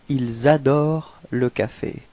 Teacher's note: So the reason for that is that adore, you can see that it's starting with a vowel, and in this case it's possible to make this small link between the S and the A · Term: liaison